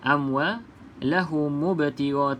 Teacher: pastikan jangan sebut hamzah wasal dekat sini. Okey, kalau kita sambung amwalahum mubtigha, terus saja ke dalam ba sukun tu.